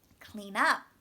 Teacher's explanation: the stress should be on up